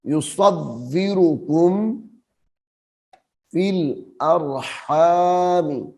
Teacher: بھی پڑھا جاتا ہے اس کو موٹا کر کے پڑھنا ہے، آواز باریک نہ ہو صاد کی، اور تھوڑی سی سیٹی کی آواز بھی آنی چاہیے۔